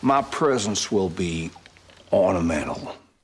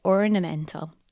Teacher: Daniel Craig's accent in Knives Out is non-rhotic, so no r sounds after vowels